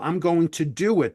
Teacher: the two different vowel sounds are coming together like the O and do and the I and it so we throw in a hidden W